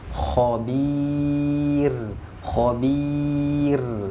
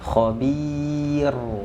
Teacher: ini dibaca tipis karena huruf ro-nya mati karena waqaf, sebelumnya terdapat ya sukun